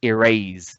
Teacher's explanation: And the most prominent part of the word is the second syllable. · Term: stress